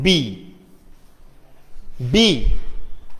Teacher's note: So B is a voiced. Later the sound is voiced because you can find the vibration of the glottis or the vocal cords · The place of articulation of B is bilabial. Okay. And the manner of articulation is stop.